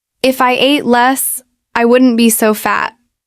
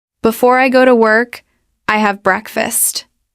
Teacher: There's often a rising intonation on the first clause and a falling intonation on the second clause.